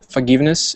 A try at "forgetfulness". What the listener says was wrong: It's not forgiveness, though, is it? It's another word. It's for, so forgetful is the root, not forgive. Yeah, I'm afraid her forgetfulness is becoming more and more apparent.